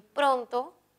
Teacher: pronto es grave tiene la mayor fuerza de voz en pro